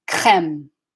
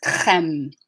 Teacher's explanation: because k is voiceless, the R will be voiceless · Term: back of the tongue R